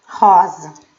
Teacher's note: Se eu não falar rosa, então o zá não é o mais forte. Quem é o mais forte é o ró. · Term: sílaba tônica